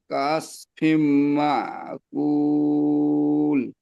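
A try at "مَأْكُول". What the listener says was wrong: জি মাশাআল্লাহ।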